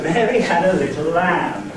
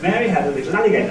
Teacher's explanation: the syllables certainly are squashed up to make an attempt to make alligator fit into the same amount of time as lamb and that is foot by synchronicity. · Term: foot isochronicity